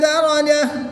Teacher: گول تا کو وقف میں ہا ساکن سے بدل دیں گے